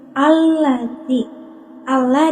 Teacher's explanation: cara bacanya itu langsung masuk ke lam yang kedua